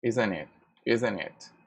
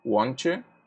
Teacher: So the intonation, let's say it goes up, which is rising intonation.